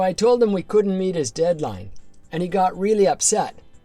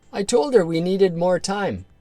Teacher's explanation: You're even dropping your H's like a native speaker.